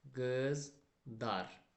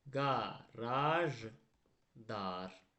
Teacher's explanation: Yəni L samiti D-ya çevriləcək.